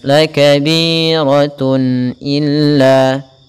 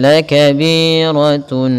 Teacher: Apabila ada tanwin an in un itu sama, misalkan ada huruf ban dengan tanwin itu sama dengan nun ban dengan nun yang dimatikan, maka suara tanwin itu suara nun. Harus ditampakkan dengan jelas. La kabiratun illa, tidak boleh la kabiratun, tidak boleh kita tahan. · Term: izhar halqi